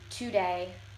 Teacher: in Chicano English, the emphasis is on the beginning of the word. So it would sound more like today instead of today.